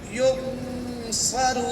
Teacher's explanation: इस नून को नाक में छुपा कर एक अलिफ लंबा करना है, यानी एक अलिफ की मिकदार वहाँ पर ठहरना है, एक आवाज तक वहाँ पे नाक में आवाज को रखना है। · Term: इख्फा